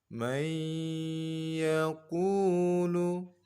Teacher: Salah satu huruf idgham bi gunnah kita dengungkan, kita leburkan huruf nun ke dalam huruf ya.